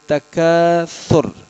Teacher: اس تکاثر میں سا کو ادا کرتے ہوئے خیال کرنا ہے. سا کے اندر سیٹی نہیں ہوتی. اور اینڈ والا جو را ہے اس کو موٹی حالت میں چھوڑنا ہے.